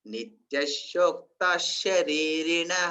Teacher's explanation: ఎందుకంటే ఇక్కడ ఈ పక్క విసర్గ వచ్చింది కదా, విసర్గ వచ్చిన తర్వాత షా వస్తే షాకు షావత్ ఇచ్చినట్టుగా చెప్పాలన్నమాట. నిత్యశోక్త శరీరిణ ఆ షాకు షావత్ ఇచ్చినట్టుగా చెప్పాలి, షావత్తు లేనప్పటికి కూడాను.